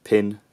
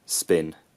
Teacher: this phoneme is realized as an aspirated bilabial plosive it's released with a burst of air